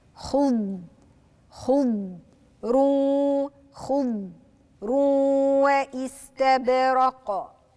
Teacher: الضاد مش عايزاها تلقلق منك، مش عايزاها ان احنا نقلقلها